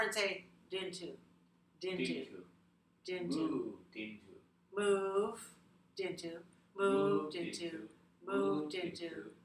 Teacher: Now put the D onto the next word. Link it over and say dintu.